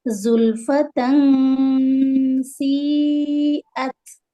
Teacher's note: تا فتحتین آگے میں سین ہے تو یہاں پر ہم اخفا کریں گے